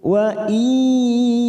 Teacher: nun sukun bertemu ya, idgham bi gunnah, kita tekan 3 ketuk